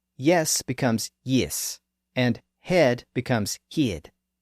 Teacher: the shift from the lower e up to I is one of the most notable features of the modern New Zealand accent